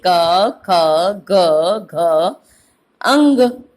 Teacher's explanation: ये आपके सारी की सारी कवर्ग वाली लाइन जो है वो किससे बोली जा रही है? कंठ से। तो इसको याद करना इजी हो जाएगा कि हमारे कंठ से कौन कौन से निकल रहे हैं।